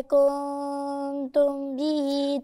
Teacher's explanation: الميم الساكنة وراها باء، الحرف الوحيد اللي لما يجي وراها الباء يبقى إخفاء على طول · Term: إخفاء الميم الساكنة